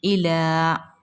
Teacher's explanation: لام پر کھڑا زبر ہے، اس کو ہم ایک الف کی مقدار کھینچ کر پڑھیں گے